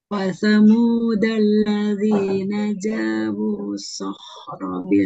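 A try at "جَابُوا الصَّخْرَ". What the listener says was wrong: Di sini jangan dibaca panjang. Nah, di sini jangan dibaca panjang karena lihat setelahnya ada huruf yang bertasydid. Jadi, maupun di sini ada waw, ada alif, alif, alif, alif, alif. Mau berapa alifnya? Asalkan di depannya ada huruf yang bertasydid, dia tidak berlaku.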